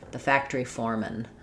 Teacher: Very little vowel there between the M and the N.